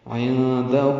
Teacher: نون ساکن کے بعد دال آنے کی وجہ سے اخفا ہے، ہو الٹا پیش 2 حرکات لمبا کریں گے۔